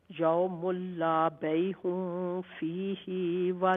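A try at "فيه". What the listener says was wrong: نہیں فیہ ہاں کو لمبا نہ کرے فیہ ولا خلت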